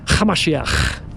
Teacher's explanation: So if we were to be transported, we went back in time 2,000 years, you would hear his followers call them Yeshua Hamashiach, with a ch sound. You have to add a little bit of a throaty little ch.